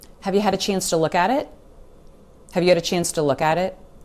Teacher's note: there really are just no clean pauses between any of these words. They really tend to run together. If you're listening for these separate sounds, you're going to miss them.